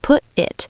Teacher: We just erase the consonant and replace it with a sudden stop of airflow. A glottle stop.